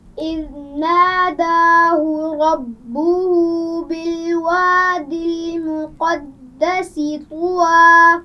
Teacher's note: سین کی آواز میں سیٹی ہوگی